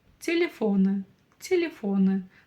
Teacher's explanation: буква Ы в отличие от русского языка читается очень и очень коротко